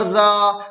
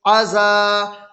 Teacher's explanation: الف مدہ کو ایک الف کے برابر کھینچ کر پڑھیں